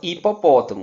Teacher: vamos perceber que o som do h simplesmente não existe